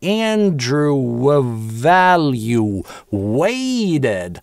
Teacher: эти два слова связываются через linking [w], потому что Andrew на /uː/ заканчивается, дальше гласный.